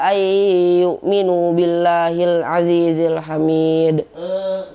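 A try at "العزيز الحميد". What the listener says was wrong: Huruf za ya jadi PR ya, kurang di maksud hurufnya kurang azizil hamid.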